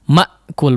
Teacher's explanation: Tertutup rapatnya antara kedua sisi makhraj ya, yaitu di pangkal tenggorokan. Ma'kul, tapi jangan terlalu lama sehingga seperti menjadi saktah ya. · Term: huruf hamzah